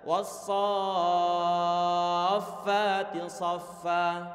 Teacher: Madnya disebut sebagai mad yang lazim. Artinya wajib hukumnya dipanjangkan dengan kadar 6 harokat. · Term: mad lazim